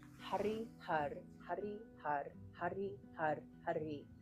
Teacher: with the tip of the tongue flicking the upper palate, the roof of your mouth. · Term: rolling my R's